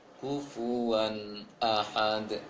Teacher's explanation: kalimat terakhir di ayat 4, kufuwan ahad. Itu tidak dengung. Seharusnya tidak dengung.